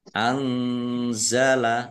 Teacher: nun sukun bertemu dengan huruf za, bacaan ikhfa, dibaca samar-samar